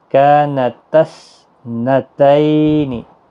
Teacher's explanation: تا نہیں پڑھا جائے گا، آگے ساکن حرف ہے، تا کو سا کے ساتھ ملایا جائے گا